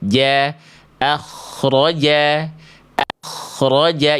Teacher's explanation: yang tebal hanya kho dan ro-nya saja